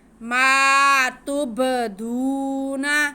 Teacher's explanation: میم پہ زبر اور ساتھ میں الف، یہ الف مدہ ہو گیا، میم کو ہم کھینچ کے پڑھیں گے